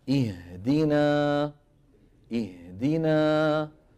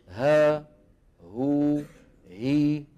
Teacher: الهاء تخرج بانفتاحهما الجزئي، الهاء تخرج بانفتاح الوترين انفتاحا جزئيا